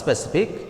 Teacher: the stress will fall on the second to the last syllable here SI is the second to the last syllable so the